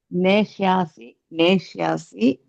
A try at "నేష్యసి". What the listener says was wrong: నేష్యాసి కాదు, నేష్యసి.